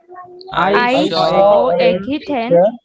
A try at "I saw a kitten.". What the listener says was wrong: কিচেনটা অত টেনের মতো হবে না। হ্যাঁ, কিচেন right. I saw a kitten. I saw a kitten.